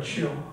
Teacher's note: ils appliquent la pointe de la langue contre le palais